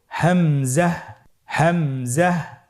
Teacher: হামজা হরফটি উচ্চারণ ক্ষেত্রে বারিক করে উচ্চারণ করতে হবে এবং এখানে টেনে পড়া যাবে না, দ্রুত পড়তে হবে।